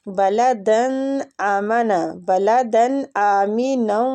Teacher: ادھر تنوین کا اخفا نہیں کریں گے، ہم تنوین کو ظاہر کر کے پڑھیں گے، ٹھیک، کیونکہ آگے ہلکی حروف ہے، اظہار ہلکی ہو رہا ہے ادھر، ٹھیک ہے۔